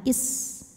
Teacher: sifat yang khas ya Ee yang tidak memiliki lawan yaitu sifat jadi ada bunyi desisan seperti suara ular